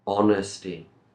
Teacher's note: honesty no h sound here